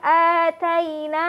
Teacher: Wa idh ataina. Fathah diikuti oleh ya sukun, dibaca dengan cara mengayunnya jadi lembut